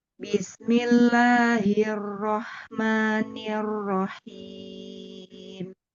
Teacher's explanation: Rnya ditekan lagi karena di sini ro tasdid. Jadi, rnya dibaca fathah ee apa tebal ditebalkan lagi.